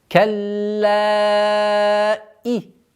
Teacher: удвоение ляма, после удвоения долгота в размере 4 огласовок фатха